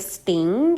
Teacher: it is not followed by the puff of air that accompanies the T at the beginning of the word in English